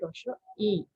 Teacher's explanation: ইর পরে যখন চন্দ্রবিন্দু থাকবে তখন তাকে রস ই এরকম বলে একটু নাকের মধ্য দিয়ে উচ্চারিত হবে এটাই হচ্ছে কি আনুনাসিক